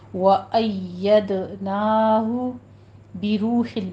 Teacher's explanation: نون کی آواز ناک میں نہیں جانی چاہیے · یا کے اوپر آپ نے تشدید کرنی ہے اور دال پر قلقلہ کرنا ہے ، نا میں فتح قائمہ ہے، اس کو نا نہیں کہنا،